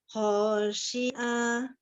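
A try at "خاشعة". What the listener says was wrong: Khosyi'ah. Pendek Umi. Ho-nya pendek yang pertama. Khosyi'ah. Ho-nya jangan jangan diayun.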